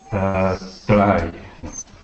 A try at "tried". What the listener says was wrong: Okay, so with your R, all right? So right now, your tongue is hitting the top, okay, of your mouth, and you're saying try, okay? So what you want to do is you want to bring your tongue down, okay?